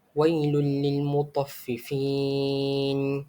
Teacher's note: dibaca dengan memasukkan huruf nun mati atau tanwin tersebut ke dalam huruf lam tanpa didengungkan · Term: idgham bila gunnah